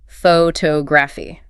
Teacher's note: >> The noun is pronounced with the stress on the first syllable, ph to graph. The field of study is pronounced with the stress on the second syllable.